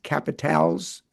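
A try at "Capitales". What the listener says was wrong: Yes, although you would not pronounce the S, so you would say it would be the Quebec Capitale. Even pluralized, you don't pronounce that S, yeah.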